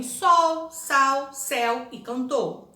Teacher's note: Há letras diferentes que representam o mesmo fonema, como a letra U e a letra L, quando aparecem ao final das palavras, como em sol, sal, céu e cantor.